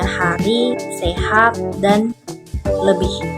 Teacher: ponem ini direalisasikan sebagai bunyi H baik berposisi sebagai onset maupun sebagai Koda pada sebuah silabel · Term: ponem H